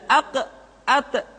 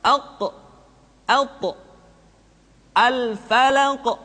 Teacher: ketika mengucapkan qf dan tho terdengar menebal suaranya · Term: Qalqalah